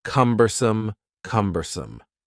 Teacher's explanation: The word cumbersome has three syllables and the stress is on the first syllable.